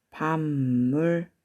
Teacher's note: 그 다음 2번 밤물. 뒤에 있는 미음이 앞에 있는 비읍과 합쳐져서 둘 다 미음으로 발음나죠